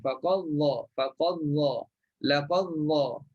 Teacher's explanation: Masukkan faqad dha laqad dha. Masukkan, dah hilang terus dal. Tak perlu lagi ziarah lagi dal, tak perlu, terus masuk kepada huruf dha. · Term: idgham